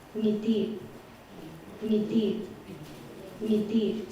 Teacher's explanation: This is the word smile, and you can hear she's doing a velar nasal at the beginning